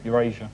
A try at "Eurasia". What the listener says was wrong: Eurasia. You need to open your mouth when you speak.